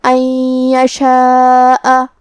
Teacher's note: پھر نون ساکن ہے اور اس کے بعد حرف الیا ہے کلمت یشاء میں، یا حروف الادغام بغنہ میں سے ہے، تو ہمیں یہ نون کو یا میں ملا کے غنہ اور تشدید کے ساتھ یہ حکم کو ادا کرنا ہے۔ ان یشاء، کلمت یشاء میں مد واجب متصل ہے، لہذا ہم اپنی آواز 4 مد کے برابر لمبی کریں گے